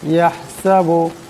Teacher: এখানে বড় হা আছে, আওয়াজটা গলা থেকে আনতে হবে